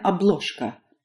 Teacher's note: the zh in the middle turns into a sh